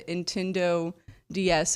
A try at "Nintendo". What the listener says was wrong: You dropped the N on it.